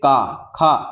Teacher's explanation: इनके उच्चारण में वायु पहले पूरी तरह से रुक जाती है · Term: स्पर्श व्यंजन